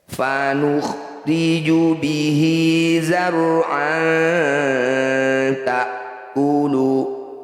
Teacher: Setiap hi atau hu yang dibaca panjang disebut bacaan mad silah qasirah. Cara bacanya hi panjangkan 2 harokat atau 1 ayunan, sama dengan mad tabi'i panjangnya.